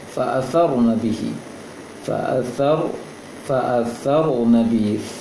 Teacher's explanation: sa ujung lidah diposisikan di ujung gigi atas